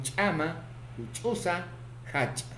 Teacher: Consonante cha, africado, glotalizado, palatal, sordo, ocurre en posición inicial, medial y final.